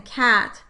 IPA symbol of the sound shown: k